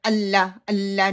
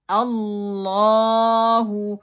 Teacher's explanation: اسا، اصا، اصا، اللہ، میں اللہ اللہ نہیں کروں گی۔ اللہ، لام کی شد کو پکڑ کے رکھنا ہے اور پھر اگلے لیٹر کو ادا کرنا ہے